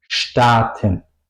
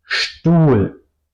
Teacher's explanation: al principio de la sílaba, tengo que pronunciar la ST, SCHT